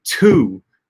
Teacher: in English we like to start our T's we like to start our words with aspirated T's